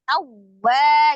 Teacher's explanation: Jadi alif lam jalalahnya dibaca dengan tebal, lamnya ha tawwa, ada waw tasdid dibacanya dengan naber ya, naber ditekan ya. Tawwa gitu, tapi tidak ditahan, hanya dinaber saja.